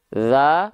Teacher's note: vokalnya seperti o tapi bukan karena memonyongkan mulut ya bukan karena MM bukan karena maju mulutnya bukan karena muncung